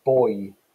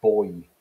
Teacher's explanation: if you take the word boy for example the oi vowel in there is actually two monophthongs conjoined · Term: diphthongs